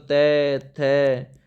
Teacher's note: त वर्ग तख्ती लगी थी दांत में यानी कि दंत में आता है